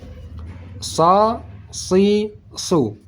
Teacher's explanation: Huruf sad ini huruf sad dibaca tetap tebal walaupun barisnya di bawah, tetap dibaca tebal. Seperti kita jelaskan tadi, cara membaca huruf sad, menaikkan terangkat pangkal lidah.